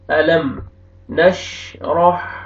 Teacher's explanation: ألم میم ساکن کا اظہار ہے، جلدی پڑھیں گے، اخفا نہیں کریں گے، نوز میں ساؤنڈ نہیں لے کے جائیں گے۔ علم ایسے نہیں پڑھیں گے، جلدی پڑھیں گے، اظہار کریں گے۔